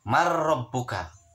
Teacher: Jawab si mayat tadi, ini adalah bacaan idgham bila guna, karena non mati sama makro adalah salah satu huruf idgham bila guna. Dibacanya harus jelas, tidak berdengung.